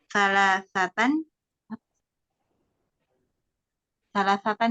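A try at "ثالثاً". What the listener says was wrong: Sali. Lamnya kasrah.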